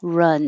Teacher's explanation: the vowel is uh like up run so your jaw stays rather closed run wrong the vowel is ah so you have to open